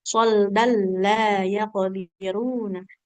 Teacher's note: Kayak dan solda ini panjangnya kalau di akhir aja ya. Kalau dilanjut, tanwin bertemu lam berarti idgham bila gunah ya